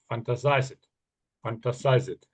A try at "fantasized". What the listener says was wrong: So fantasized, fantasized. Yeah, the ED's always a bit tricky, isn't it?